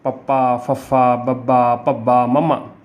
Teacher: ਉਹ ਧੁਨੀਆਂ ਜਿਨ੍ਹਾਂ ਨੂੰ ਉਚਾਰਨ ਲੱਗਿਆਂ ਸਾਡੇ ਹੋਂਠ ਜਾਂ ਸਾਡੇ ਬੁੱਲ ਆਪਸ ਵਿੱਚ ਮਿਲਦੇ ਨੇ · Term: ਹੋਂਠੀ ਧੁਨੀਆਂ